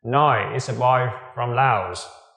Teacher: chúng ta sử dụng ngữ điệu đi xuống